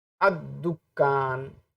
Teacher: تو آپ دیکھیں گے الف لام میں لام کو یہاں نہیں پڑھا جا رہا، بلکہ جو دال ہے اس کو تشدید کی شکل میں پڑھا جا رہا ہے